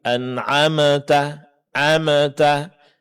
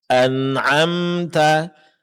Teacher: praktekkan secara sempurna sifat at-tawassut pada huruf mim, yaitu suara tidak terlalu dilepaskan, tidak pula terlalu ditekan. Jadi bunyi sukunnya akan jelas.